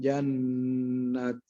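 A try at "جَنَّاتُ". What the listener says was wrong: Panjang. diberhentikan dibaca 6 harokat. Jannat.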